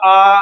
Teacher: अगर आ बोलते हैं तो हमारा पूरा का पूरा मुख जो है वो ओपन हो जाता है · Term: विवत